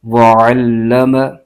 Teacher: عین کی جو آواز ہے یہ حلق کے درمیان سے آنی چاہیے